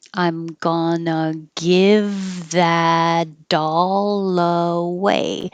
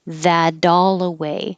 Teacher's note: The T changes to a D and the L connects to the A.